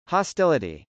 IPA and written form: hɑstˈɪləti (hostility)